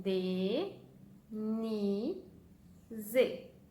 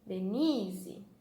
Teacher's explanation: Então, o ni é a nossa sílaba tônica.